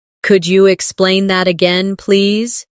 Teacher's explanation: Could you sounds like could ya, naturally.